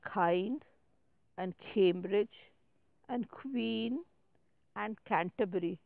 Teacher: the back of the tongue is against the soft pallet you know the back of the tongue you have the map